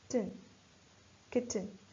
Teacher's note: in the nucleus section, we have the syllabic consonant n